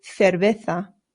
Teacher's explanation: the C's in Spanish make a th sound, but the Z's do as well. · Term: Spain pronunciation